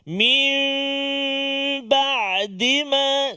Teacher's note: cara dia bacaannya menukarkan suara huruf nun kepada huruf mim beserta dengan dengung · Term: iqlab